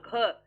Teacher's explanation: घ को बोलने में ज्यादा मेहनत और ज्यादा हवा मुख में से बाहर आ रही है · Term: महाप्राण